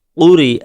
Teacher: را کے نیچے زیر ہے، اس وجہ سے را باریک ہوگی